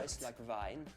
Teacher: the German W and V sound. There's no difference between them. They both sound like a V.